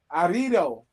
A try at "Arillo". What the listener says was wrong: totally put a D in Ario.